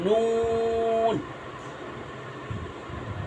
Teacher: জিব্বার আগার কিনারা তার বরাবর পরে তালুর সঙ্গে লাগাইয়া উচ্চারণ হবে নুন